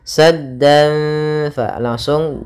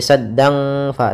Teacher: kita tahan gunanya sambil kita samarkan suara tanwinnya kepada huruf Fa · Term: ikhfa Hakiki